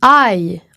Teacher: On commence avec un « A », on finit avec un « I ». « I ». Donc, on change de voyelle pendant qu'on la dit. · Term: diphtongue